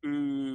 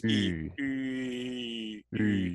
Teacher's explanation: What you're actually doing is you're taking the U from the back of your mouth and you're pushing it to the front of your mouth, but keeping it rounded So oo becomes e.